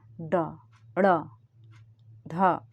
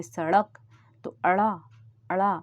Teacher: जैसे हम इनका उच्चारण करते हैं ड, ड़, ढ, तो ऐसा लगता है कि जीभ ऊपर से टच होके नीचे फटाक से नीचे आ जाती है। तो ये उत्क्षिप्त हैं, मतलब ऐसा लग रहा है कि जीभ को हम फेंक रहे हैं। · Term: उत्क्षिप्त व्यंजन